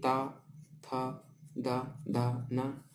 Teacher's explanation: इनको उच्चारित करते समय जीभ जो है दांत को टच करती है।